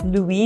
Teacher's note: because the S is at the end of the word here, so there's no pronunciation of the S